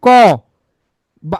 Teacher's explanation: ক, আমার জোর কম দিতে হচ্ছে তাহলে অল্প প্রাণ।